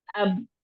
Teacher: तो अब फौरन से इन होठों को जुदा करना है। अब इस जुदा करने को कहते हैं कलकला